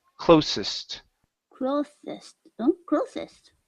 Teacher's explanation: let's use then unvoiced s